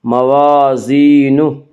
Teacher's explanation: الف مدہ کو 1 الف کے برابر کھینچ کر پڑھیں گے